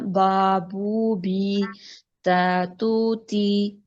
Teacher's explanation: एक अलिफ के बराबर लंबा करना है, झटका नहीं देना। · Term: अलिफ वाव या मद्दा